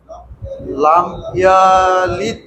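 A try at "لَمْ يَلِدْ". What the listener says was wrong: ইয়াতে টান নাই ইয়ালিদে লাম ইয়ালিদে লাম ইয়ালিদে বলেন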